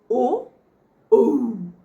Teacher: কণ্ঠস্থ স্বর অর্থাৎ কণ্ঠ এবং ওষ্ঠ মিলে যে শব্দটা হচ্ছে